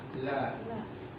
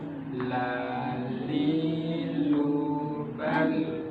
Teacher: Fokus istiqomah huruf lam, di situ semuanya diucapkan dengan cara seperti itu. La, ujung lidah, bagian tepi lidah sampai dengan pada bagian ujungnya ditempelkan pada bagian gusi gigi seri depan bagian atas.